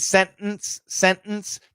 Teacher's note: to flap a t um so when we did sentence sentence that's not a flap t it's a stop t